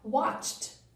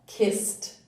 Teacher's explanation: Então, nós finalizamos o som do ED com som apenas de T. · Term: som de T